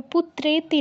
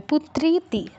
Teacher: তবে পুত্রেতি নয়, পুত্রীতি, দীর্ঘ ইকার আছে, একার নয়।